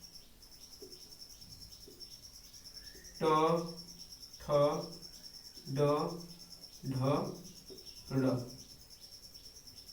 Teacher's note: ट वर्ग इसका मूर्धा से होता है।